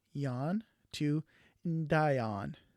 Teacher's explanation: you have to bring in that D sound in front of the vowel sound that was previously dropped and put in your pronoun prefix ahead of that.